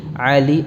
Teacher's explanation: dalam keadaan waqaf tanwinnya berubah menjadi huruf mad, yaitu alif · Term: mad iwad